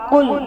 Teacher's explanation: لام کو باریک پڑھنا ہے، اتنا موٹا نہیں پڑھنا